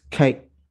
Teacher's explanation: in mle the k sound or the g sounds tend to be maybe the tongue slightly further back in the mouth